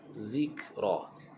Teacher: Zik, kaf adalah hukum mahmus. Zikra tak perlu bunyi zik, itu terlampau bunyi qalqalah. Zikra, dan ra diwaqafkan dengan 2 harakat.